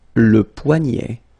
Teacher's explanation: So this combination of ET at the end will basically open the sound, so you get E, E, poignet.